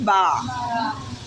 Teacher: और होंठों को आपस में मिलाकर, होंठों को आपस में मिलाकर अदा करेंगे